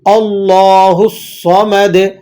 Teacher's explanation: دال کو ہم اس لیے ہلا رہے ہیں کیونکہ دال حروف قلقلہ میں سے ہے۔